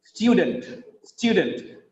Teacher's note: Because of the stress on the first syllable, stew, the next vowel sound becomes weak. That's why it becomes student.